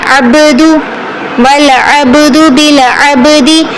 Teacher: با پر تفخیم قلقلہ کرنا ہے